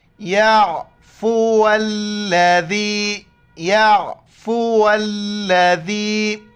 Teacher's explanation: ذال کے وقت زبان باہر نکالتے ہیں اور ذال کو یا کے ساتھ ملائیں گے۔